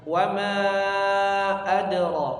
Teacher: Wa ma dipanjangkan 4 atau 5 harokat ya. Lihat, ada tanda seperti bendera di situ ya.